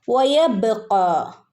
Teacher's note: വ പറയുമ്പോൾ ചുണ്ട് കൂർപ്പിച്ച് പറയണം കേട്ടോ